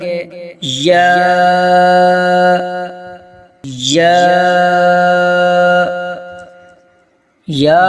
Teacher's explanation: زبان کا درمیانی حصہ تالو سے لگے تو یا ادا ہوتا ہے